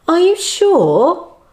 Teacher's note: the intonation in the yes no questions rises at the end